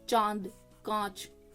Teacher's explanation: उच्चारण में नाक से बहुत कम सास निकलती है और मुख से ज्यादा यानी कि इसमें नाक जो है वो कम इवॉल्व होगी आपका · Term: चंद्र बिंदु